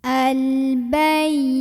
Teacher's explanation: ya tasydid tapi sebelumnya bukan tanwin, bukan juga nun sukun, maka kita tidak perlu tahan ya. Cukup dinaber, agak dibentak, dinaikkan intonasinya. Al-bayina. Nah, mad tabi'i karena ada baris fathah berdiri di atas huruf nun, dibacanya panjang 2 harokat.